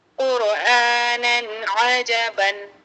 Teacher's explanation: تنوین کے بعد عین حروف ہلکی کا ہے، تو یہاں پر تنوین کی آواز کو ظاہر کر کے بغیر غنہ جلد پڑھیں گے